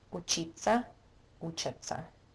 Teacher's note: When we have te, se, ya, it's pronounced as ца.